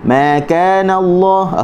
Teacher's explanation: Asalnya kita tutup, bila kita nak sebut kita buka ma. Cuma huruf mim ni adalah huruf yang nipis, maka kita kena renggangkan sedikit bibir kita dan kita buka ma kerana huruf yang nipis.